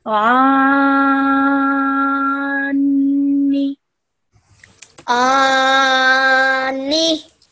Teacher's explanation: keeping that nasal, that noon ghunna sound in your nose for 2 seconds. And make sure that you don't prolong this noon sound for more than 1 second.